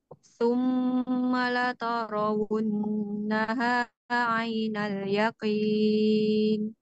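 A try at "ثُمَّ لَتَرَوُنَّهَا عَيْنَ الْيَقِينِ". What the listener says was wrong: Ulangi, summa lata, bukan to.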